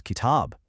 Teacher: if you hold that middle ah sound for just a fraction of a second longer, literally one extra beat, it becomes kitab